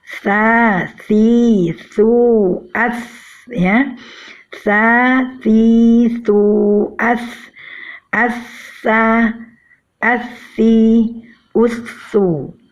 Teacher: Dan pada pengucapan huruf tha ini juga ada sedikit perbedaan, yaitu pengucapannya dengan mempertemukan ujung lidah dengan ujung gigi seri atas disertai dengan aliran nafas